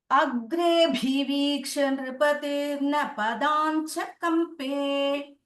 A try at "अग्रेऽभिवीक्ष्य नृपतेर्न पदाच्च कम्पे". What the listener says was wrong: There is no nakara, padacha it is.